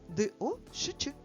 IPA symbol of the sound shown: шч